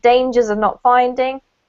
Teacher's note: so no pause it's almost like it's one word you you connect the s up to the o dangers of